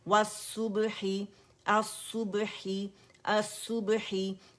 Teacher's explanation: अच्छा, यहाँ पे स्वाद हमारे पास लाम खाली है और स्वाद जो मुशद्दद है, क्योंकि ये लाम शमसिया है, और ये लाम स्वाद ये था अल और सू था, लेकिन ये लाम इसके अंदर मर्ज हो गया, अब स्वाद की शक्ल में लाम पढ़ा जा रहा है